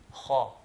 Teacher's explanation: pronounce the kha from its correct makhraj, which is the top of the throat